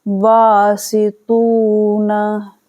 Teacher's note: تو با کو کھینچا ہم نے، تو کو کھینچا، نا کو نہیں کھینچیں گے اور سی کو نہیں کھینچیں گے